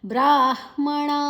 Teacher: ಬ್ರಾಹ್ಮಣ ಣ ಮೂರ್ಧನ್ಯ ಣ